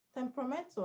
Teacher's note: Temperamental has a stress on men, which is second syllable from the end.